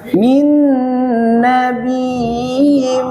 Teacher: Panjang dulu, sempurnakan matobi'nya, baru dimasukkan ke ya. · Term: mat tamkin